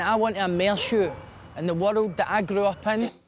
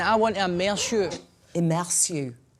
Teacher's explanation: you have a uvula r you produce it in the same way as a french person